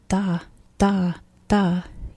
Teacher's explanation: if you say da da da you shouldn't feel any air coming out even if you're doing this one with your teeth you shouldn't